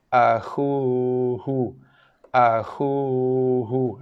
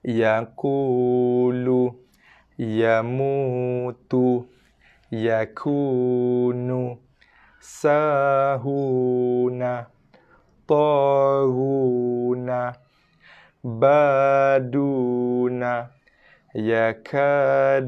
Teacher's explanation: huruf waw yang tak bertanda ini dibaca dengan makhraj jauf 2 harakat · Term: makhraj jauf waw